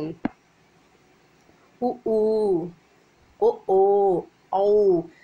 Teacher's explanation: ஓரமானது மேல்வாய் பல்லை தொடும்போது பிறக்கிறது உ ஊ ஓ அவ் இதெல்லாம் வந்து வாய் திறக்கும் முயற்சியுடன் இதழ்கள் குவிவதால் பிறக்கின்றன